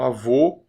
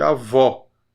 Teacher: Esse ó é como aquele ó de avó, por exemplo. Tem um avô fechado e avó, que é mais aberto.